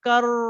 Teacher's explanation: रॉ पे शद है, so you have to stay over there for few seconds